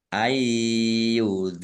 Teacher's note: nun sukun bertemu dengan huruf ya idum bighhunah masuk dengan mendengung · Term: idgham bi gunnah